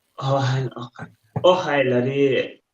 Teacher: the Scottish accent is always rising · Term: intonation